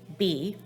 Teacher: the b sound you're going to produce with voice so you should feel some vibration here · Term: voicing